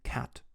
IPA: kʰæt